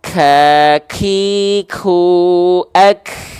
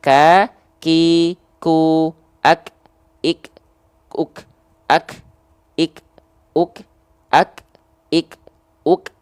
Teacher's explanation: untuk huruf kaf ini dia hanya berupa percikan nafas. Justru kalau dia sampai betul-betul berlebihan, lebih dari kadar percikan, dia disebutnya takaluf.